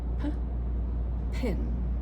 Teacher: There is quite a bit of air, the aspiration.